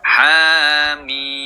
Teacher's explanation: ha dengan mim tidak ada tasydidnya, tidak bertasydid ya, sehingga membacanya jangan ditekan antara ha dan mim atau jangan dimasukkan, hanya jangan masuk ke mim.